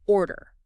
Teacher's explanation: What you need to know for natural rhythm is that the first syllable carries all the weight. It is much stronger than the second. Like pushing the sound out on the first part.